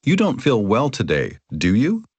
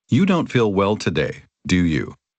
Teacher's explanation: First, imagine you are 80 to 90% sure that someone will agree with you and use rising intonation. Then, imagine you are 95% sure that someone will agree with you and use falling intonation.